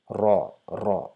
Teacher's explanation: We just make the shape of our mouth a little bit round to produce a little bit thicker sound